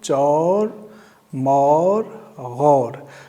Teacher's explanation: Actually, we do not pronounce vav in full length. We shorten its length. So it is chor. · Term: vav majhul